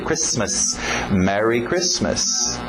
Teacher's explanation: O T é mudo, não pronuncia esse T.